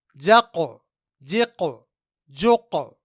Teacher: यहां इन तीनों जगहों में हमने हर्फ कफ में कलक किया क्योंकि कफ रूफे कलक में से है और यहां काफ साकिन है